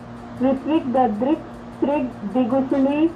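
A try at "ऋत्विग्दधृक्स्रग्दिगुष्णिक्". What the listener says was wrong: नहीं श्रिग नहीं श्रग है, ऋत्विक दद्रिक, ऋत्विक दद्रिक श्रग, ऋत्विक दद्रिक श्रग ऐसा है, श्रग है।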